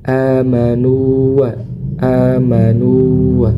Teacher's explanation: Jadi kalau kita bacanya di sini kalau kita bacanya amanu wa itu maka kurang tepat ya. Tapi kita harus menyempurnakan huruf madnya kemudian masuk ke huruf wau tanpa ditasdidkan · Amanu di sini meskipun wau sukun bertemu dengan huruf wau tapi tidak diidghamkan